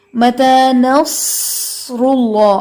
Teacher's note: صاد کی سیٹی آپ نے بہت اچھے سے ادا کی ہے، ان نصر اللہ قریب، یہاں سے آپ کی سیٹی کافی نمایاں تھی اور کافی اچھی تھی۔